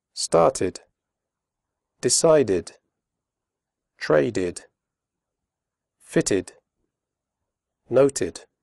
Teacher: After d and t, the final ed is pronounced id, as in did.